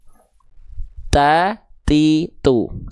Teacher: ketika ujung lidahnya nempel ke pangkal gigi atas dia tertahan suaranya. Ketika lepas dia keluar percikan nafas. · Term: huruf t